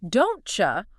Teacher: The T and the Y sounds blend together. They kind of fuse >> to make a chi sound. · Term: palatalization